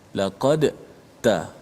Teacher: Huruf da dengan ta ni makhraj yang sama. Hujung lidah berada di belakang gigi atas kita, kat gusi pengikat gigi. Jadi bila huruf tu sama pada makhraj, satu mati, satu hidup. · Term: idgham mutajanisai